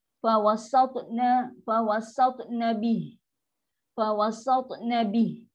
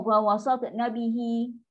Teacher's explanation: Bunyikan angin lepas tu bih. Ha yang sukun. Sifat rohawah daripada huruf ha.